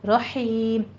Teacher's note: ہا وسط حلق سے باریک پڑھی جائے گی، رحیم، اس کو رحیم بھی نہیں کہنا، ہا کے اوپر تشدید نہیں لانی ہے، باریک پڑھنا ہے، رحیم۔